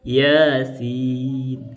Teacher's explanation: Itu ya-nya dibaca 2 harokat, sinnya dibaca 6 harokat.